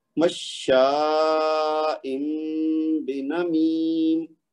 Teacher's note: تو یہ تنوین کی آواز میم میں بدلنی ہے · شین کے بعد جو حمزہ ہے اس کو میں نے بہت لمبا پڑھا، کیونکہ اس کے اوپر بڑی والی مد ہے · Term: اقلاب